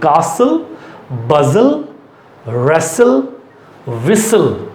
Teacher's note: T हमारे बोलने पर नहीं आएगा, लेकिन स्पेलिंग में आएगा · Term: T is silent